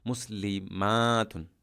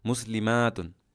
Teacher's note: আতুন আতিন আতিন আমরা এই অংশে আলিফ তা অর্থাৎ লাম্বা তা আলিফের মধ্যে টান দিতে হবে মুসলিমাতুন দীর্ঘস্বরে উচ্চারণ করতে হবে